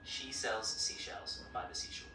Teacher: by the seashore has a nice open E sound